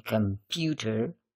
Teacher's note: the second stress syllable, pew, is perceived as more prominent than other syllables